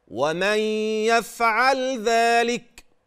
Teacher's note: والذال اخراج طرف اللسان عند النطق به